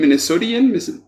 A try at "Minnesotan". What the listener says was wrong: Minnesotan. We pronounce our O's long, so Minnesotan is usually what People say.